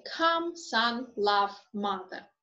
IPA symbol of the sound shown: ʌ